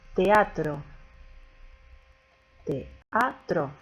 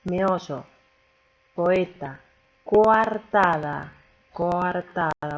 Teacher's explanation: Hemos dicho que las abiertas son las que se pronuncian abriendo la boca para simplificar, y tenemos la A, la E y la O, y las cerradas I y U. Acá tenemos combinación de dos vocales abiertas distintas. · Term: hiato